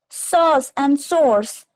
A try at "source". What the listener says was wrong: No, no source. Both are having same sound. Source. Okay, source. There is no R. R is silent.